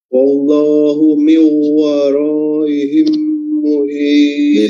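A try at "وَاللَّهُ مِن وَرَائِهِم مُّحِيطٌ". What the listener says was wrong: Ditambah lagi durasinya mat, ini yang panjang ya. Wara itu mat wajib.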